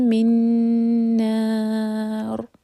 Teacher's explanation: تو نا 4 حرکہ لمبا مد عارض للسکون